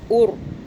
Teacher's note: را سے پہلے پیش آ رہا ہے تو را موٹا، اور یہ پہلا والا بھی موٹا، پہلے نمبر پہ موٹا پڑھیں گے را کو، دوسرے نمبر پہ بھی موٹا، اور تیسرے نمبر والا باریک ہوگا، ار کریں گے، ارو ایسے نہیں کریں گے، اور ار اور۔